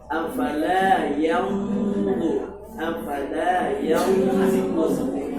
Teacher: Gunnahnya ditafkhimkan. Tafkhim itu tebalkan. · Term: tafkhimul gunnah